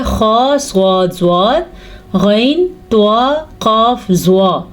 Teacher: یاد رکھیں 7 ایسے حروف ہیں جو ہر صورت میں پر پڑھے جاتے ہیں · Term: حروف مستعلیہ